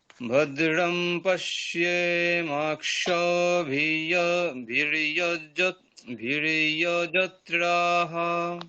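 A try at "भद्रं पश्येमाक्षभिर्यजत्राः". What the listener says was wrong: বাহ, খুব ভালো।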